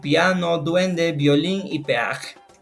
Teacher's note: creciente se caracteriza por iniciar con una vocal cerrada y terminar con una vocal abierta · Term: diptongo creciente